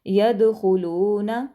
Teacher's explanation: دال پر کلکلا کریں گے، حروف کلکلا میں سے ہے، خوا کو موٹا پڑھیں گے۔ خلون، لام کو لمبا کریں گے کیونکہ آگے واو مدہ ہے۔